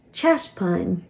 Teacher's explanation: a broad T sound um in standard form but in oler I've mostly heard this as though it has a slender T CH instead of T